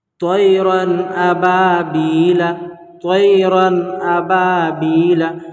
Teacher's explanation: تو تنوین یا نون ساکن کے بعد حروف حلقی آوے تو نون کو ظاہر کر کے بلا گنہ کے جلد پڑھیں گے۔ نون کو ظاہر کر کے، یعنی کہ نون میں گنہ نہیں کرنا ہے، ظاہر کر کے پڑھیں گے، مطلب جلدی پڑھیں گے۔ اس کو اظہار کہتے ہیں۔